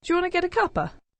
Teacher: the first 2 words, do you, there we have an example of coalescent assimilation because it's due. · And then in the next 2 words, want to, we've elided the t sounds of, well, in fact, both of the t sounds have disappeared. So that gives us wanna. With get they've linked together, so we've got a word ending with a consonant sound, get, linking with the following vowel sound to give us getter. · And we've elided quite a lot there, because in fact we've elided a complete word because the word tea has completely disappeared. The f sound in of has also disappeared.